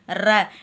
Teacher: இங்கே மைய பகுதியை உரசுவதால் ரகரம் தோன்றுகிறது. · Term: வல்லின ரகரம்